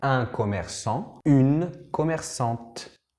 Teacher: gracias a esta E, vamos a poder decir la T que no se decía al masculino. ¿Te acuerdas que al masculino, un commerçant, la T no se dice porque no hay nada que sigue?